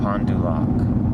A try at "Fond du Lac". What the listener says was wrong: Not Pond. It's not Pond. Fond du Lac. Fond du Lac.